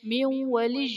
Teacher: نون ساکن کے بعد حروف یرملون میں سے واو آ رہا ہے تو یہاں پر ادغام مع الغنہ کا قاعدہ ہوگا، یعنی نون ساکن میں ہم غنہ کر کے پڑھیں گے